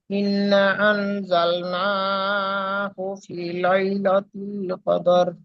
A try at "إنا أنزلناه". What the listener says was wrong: ইন্না, এখানে টান দিতে হবে।